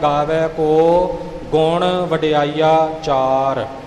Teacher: ਕੋ ਗੁਣ ਵਡਿਆਈਆ ਚਾਰ ਵਡਿਆਈਆਂ ਪਾਠ ਹੈ ਤੇ ਅੱਗੇ ਚਾਰ ਹੈ ਵਡਿਆਈ ਆਚਾਰ ਨਹੀਂ ਹੋਵੇਗਾ ਵਡਿਆਈਆ ਚਾਰ ਇਕੱਠਾ ਨਹੀਂ ਹੋਵੇਗਾ ਨਿਖੇੜਾ ਆਵੇਗਾ